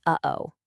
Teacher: You've got the glottle attack. That's a hard kind of punchy start. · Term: glottal attack